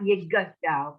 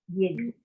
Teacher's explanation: The shva closes the syllable, not Yigadal, but Yigdal. The shva closes the syllable when it can.